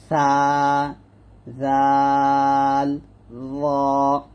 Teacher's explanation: জিহ্বার আগার সামনের উপরে দুই দাঁতের আগার সঙ্গে লাগিয়ে উচ্চারিত হয়